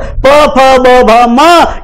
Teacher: ये प वर्ग भी कहां से बोला जाता है, होठ से, ओष्ठ से बोला जाता है